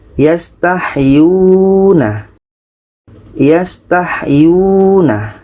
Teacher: Huruf Yu dibaca panjang karena terdapat huruf Wau mati yang didahului oleh vokal depan. · Yu ini dibaca panjang karena ada waw mati sebelumnya baris depan. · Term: Mad Asli, mad asli